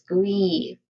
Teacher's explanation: The primary stress here is on the second syllable, gree, which has a long E sound.